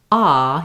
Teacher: You can feel how your jaw is closed, your tongue fills up your whole mouth, E, and there's just that little space, versus when you say ah, you can feel how open the mouth is, the tongue is down low